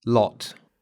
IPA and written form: lɔt (lot)